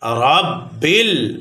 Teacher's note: র মোটা হবে এবং বা হরকত তাড়াতাড়ি উচ্চারণ হবে